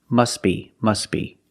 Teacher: But if you link the words, you pronounce it must be, must be. The T is silent because it's between consonants.